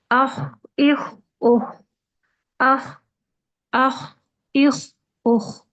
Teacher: آواز بھی جاری رہ رہی ہے اور سانس بھی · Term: رخاوہ